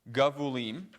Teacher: notice the accent always stays on the ultima, so the last syllable.